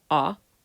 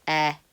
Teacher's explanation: the masculine is often the same kind of shape as the feminine but with a back vowel or ah where the feminine has a front vowel eh